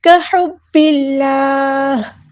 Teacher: با کو ہم نے لام کے ساتھ ملا دینا ہے، حمزۃ الوصل ہمارا ڈراپ ہو جائے گا ، اللہ کا جو لام ہے یہاں پہ باریک پڑھیں گے،